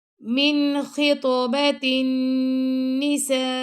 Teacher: خطو تو پہ ہم نے کلکلا کیا اور تو کو موٹا بھی پڑھا ہم نے